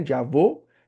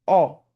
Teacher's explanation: a boquinha fica mais fechada, tem o ó que eu abro mais a boca